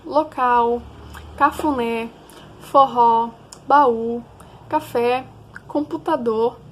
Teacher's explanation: são aquelas em que a sílaba tônica ou seja a sílaba forte é a última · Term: oxítona